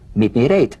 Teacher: the final T, when it's followed by a word beginning with a vowel, again, it becomes, in effect, a medial T. There's a vowel on both sides of it, so it gets softened to a D. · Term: The medial T